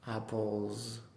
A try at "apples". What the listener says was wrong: That's much better. Now you're listening.